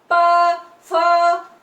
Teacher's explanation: तो अपने देखो दोनों होठ एक दूसरे को टकरा रहे हैं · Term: ओष्ठ